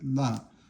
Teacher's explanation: but you just pronounce it la, neutral tone.